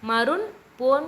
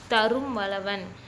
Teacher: பக்கத்துல ம் வந்திருக்கிறதுனால இந்த இடத்துல தன்னோட மாத்திரை அளவுல இருந்து குறுகி ஒலிச்சிருக்கு அரை மாத்திரை அளவுல இருந்து கால் மாத்திரை அளவா குறுகி ஒலிச்சிருக்கு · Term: மகர குறுக்கம்